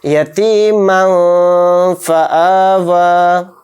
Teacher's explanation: یتیما فآوا، اس کو یتیمن فآوا نہیں بولیں گے، نون کو ظاہر نہیں کریں گے، جو میم دو زبر من میں جو نون آ رہا ہے اینڈ میں اس کو ظاہر نہیں کریں گے، اس کو ناک میں چھپائیں گے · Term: اخفا